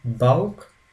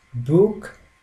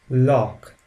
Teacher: The CH followed after vowels like A, O, U always takes the sound 'k' like in sick.